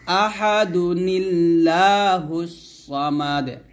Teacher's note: আহাদু বলতে হবে দাল পেশ দুই এক পেশ উচ্চারণ করতে হবে তারপর নুনকে লাম খেতে হবে নিলা বলতে হবে